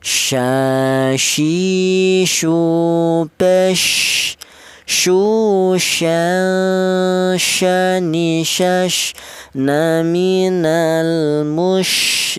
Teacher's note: Ini huruf shin ini berasal dari tengah lidah.